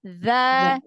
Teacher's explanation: Ya, kalau za ini yang keluar ujung lidah.